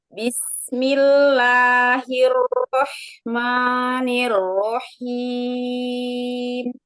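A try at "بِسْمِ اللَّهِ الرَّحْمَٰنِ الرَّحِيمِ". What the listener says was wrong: Nanti la sama ma-nya juga lebih tipis ya. Bismillah. Tekanan dari tenggorokannya jangan terlalu berlebihan. Suaranya, dorongan suaranya jangan terlalu berlebihan, biar dia nggak tebal.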